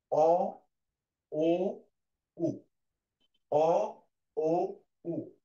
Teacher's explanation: জিভের আগাটা পিছন দিকে মানে ভাঁজ হয়ে দেখো পিছন দিকে যাওয়ার একটা প্রবণতা আছে, এই জন্য এটাকে বলা হয়েছে পশ্চাৎ।